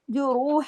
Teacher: रा इधर हावी हैवी पढ़ा जाएगा, मोटा रा पे पेश है ना